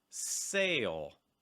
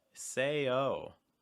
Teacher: big difference between the dark l and the o is that for the dark l back your tongue raised but for the o sound especially at the end of the sound your tongue's down